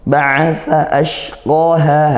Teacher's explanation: as syin dari tengah lidah ke langit-langit atas